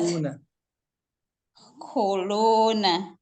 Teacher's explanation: Yang pertama itu khonnya dibaca panjang 1 harokat. Lamnya itu dibaca panjang 2 harokat.